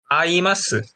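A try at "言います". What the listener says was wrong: 아가 아니라 이마스. 이마스.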